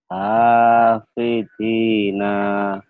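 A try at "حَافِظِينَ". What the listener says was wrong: Kenapa nanya panjang? Ayo. Nanya panjang enggak? Hafizina. Hafizina. Zina. Hafizina.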